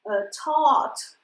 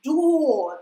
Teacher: вот эта R, она у меня повлияла на качество гласного звука. Вот такого в русском языке не бывает, да, то есть мы никогда, у нас такое буквосочетание таких не происходит.